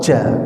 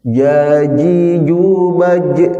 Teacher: Nah, Jim itu sebenarnya tidak keluar hawa ya.